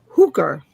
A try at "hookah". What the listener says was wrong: No, hookah. There's no R at the end of it. No, it's AH. Hookah. R. Why are you putting an R at the end of a word that you would normally put an AH sound at the end of?